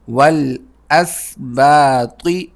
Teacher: واو کو لام سے ملائیں گے